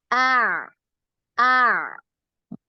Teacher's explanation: ain dari tenggorokan bagian tengah